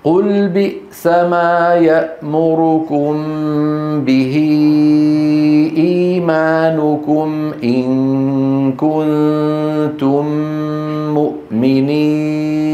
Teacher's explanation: وتكون الغنة أنقص يعني أقصر ما تكون في النون والميم المتحركتين